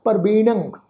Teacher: नाणे अखर के उपर टिप्पी की मात्रा, नासकी उच्चारण करांगे प्रवीणं